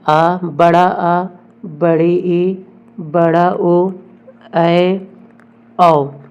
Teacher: दीर्घ स्वर ऐसे स्वर होते हैं जिनके उच्चारण में अधिक समय लगता है।